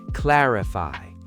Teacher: The word clarify is pronounced clarify, with stress on the first syllable.